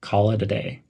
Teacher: link call and it as one word call it emphasize the word day